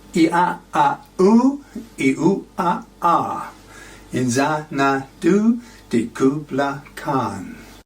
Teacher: Zan is balanced by Khan, and the alliterative d and k sounds, the assonance of I in and did, and a and u in Xanadu and Kubla Khan, all work together to create a powerful effect.